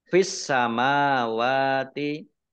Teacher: Fis samawati alif lamnya alif lam syamsiyah karena tidak dibaca langsung masuk ke huruf berikutnya yaitu sin, ditandai sinnya ada tasdidnya. Sinnya dibaca double.